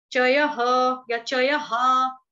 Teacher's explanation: विसर्ग का उच्चारण ह या हा से कर सकते हैं